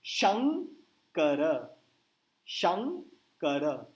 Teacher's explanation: बिंदु के आगे के आया और के वर्ग का अनुनासिक है